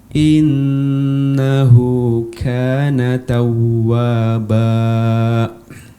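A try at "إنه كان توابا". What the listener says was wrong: Ya, afwan, innahu kana tawwaba. Ba ini dua harokat aja ya. Dua harokat. Tawwaba. Kemudian lagi-lagi di akhir jangan dikasih apa? Jangan ditutup si pita suara sehingga terdengar seperti hamzah di ujungnya ya. Hamzah sukun tidak.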